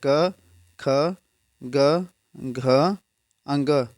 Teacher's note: उच्चारण स्थान कहां से होता है कंठ से